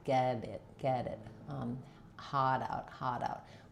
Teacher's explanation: What I've found helps my clients if they're trying to do order or sort of harder is that thinking of, instead of, when I'm just saying, for example, it's hot out, or get it. As I flap those T's, there's no R before it. My tongue is coming right behind my teeth.